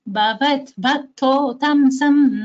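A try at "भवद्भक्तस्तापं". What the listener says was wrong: I want you to stress on the Mahaprana. You are stressing on द ता also only द two भास should be stressed भवत भक्तोक्तम सम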